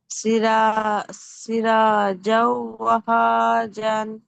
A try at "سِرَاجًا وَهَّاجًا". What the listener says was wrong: గున్నా, రెండు హరకత్లో గున్నా చేయలేదు. మరి ఇక్కడ సిరాజం కలిపినప్పుడు గున్నా చేయలేదు. సిరాజం వహాజా.